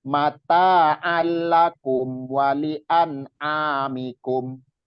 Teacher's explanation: taknya juga jangan kepanjangan. Di ayun aja, matobi'i.